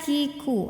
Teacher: kalau kafnya lagi dalam keadaan hidup angin sama suaranya itu keluar sama-sama